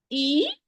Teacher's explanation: The same articulation, the same specific articulation point of the natural mad, it is the same articulation point of the Kasra. Middle of the tongue will be raised and the lower jaw will be lowered.